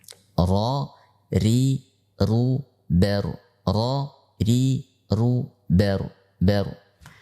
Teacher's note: sifat yang dimiliki oleh ra ini adalah sifat takrir, yaitu bergetar. Sifat bergetar yang kita baca, pada saat kita membacanya, kita perhatikan, ya, ada getaran, ya.